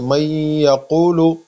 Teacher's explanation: تو اس کا مطلب کہ نون ساکن کے بعد اگر یا آئے تو وہاں پہ ہم غنہ کریں گے اور نون کو یا میں کنورٹ کریں گے